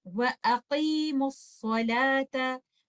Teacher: میں میم کو صاد سے ملا دوں گی اور یہ اتقاء الساکنین کی وجہ سے ہوگا ، کیونکہ جب دو ساکن لیٹرز ایک دوسرے کے ساتھ دو